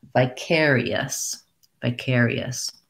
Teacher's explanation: vicarius has our air diphthong that we were just talking about with dare and there and it's on the stress syllable · a short um the rest of the syllables are shorter but we have secondary stress on the vi because we have a clear vowel i so try it like i and then vi care e us